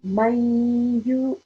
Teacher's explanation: we have to make sure that we make a nasal sound, the Ghunnah sound, for no less than 2 seconds and no more than 2 seconds